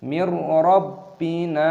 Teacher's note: Nun yang berkorespondensi dengan sukun dan ro dibaca sebagai idgham bila ghunah, menyatu tanpa bunyi sengau. Jangan dibaca sebagai mir. · ada tashdid pada ba. Jadi kita tekan dan gabungkan